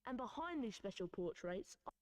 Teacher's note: And behind the special portraits, you will notice that the word the accented word there is behind because these special portrait special portraits was mentioned before, right?